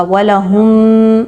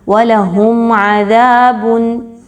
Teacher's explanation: میم ساکن کے بعد عین آ رہی ہے، اظہار شفوی ہوگا، بالکل بھی غنہ نہیں کرنا، یہاں پر رکنا غلط ہوگا۔